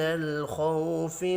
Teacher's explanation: خو پر پڑھا جائے گا۔ خو واو لین ہے۔